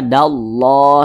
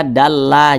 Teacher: dibaca tarkik seperti itu dibacaah Jadi ini ada lafaz Allah nih sebelumnya ada huruf yang memiliki tanda baca fathah maka lafaz Allah di baca takhim dibaca tebal dibaca dallah seperti itu jangan dibaca dalla jangan kemudian yang dapat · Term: tafkhim